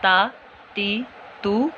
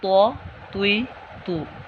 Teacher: دیکھیں میں نے تا اور طوا میں واضح فرق کیا، تا کو باریک اور طوا کو پر موٹا